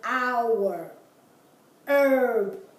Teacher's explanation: you have the word our herb there the H is there but it's not pronounced